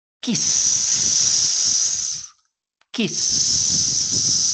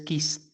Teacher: No hay vibración. Como no hay vibración, vamos a decir que el pasado es kissed.